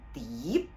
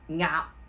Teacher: 佢係唔會發出個聲音，但係最後嘅時候咧，我哋個口型咧要收返合埋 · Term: 輔音尾韻